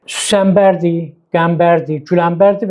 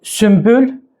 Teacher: bu cür adlardan. Yəni N və B səslərinin yanaşı gəldiyi adlarda da M kimi tələffüz olunur, lakin N yazılır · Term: səs assimilyasiyaya uğrayır